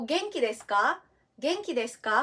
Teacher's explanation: Genki desu ka with a rising intonation